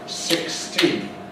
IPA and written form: ˌsɪksˈtiːn (sixteen)